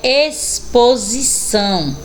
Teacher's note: Olha aí o x com som do S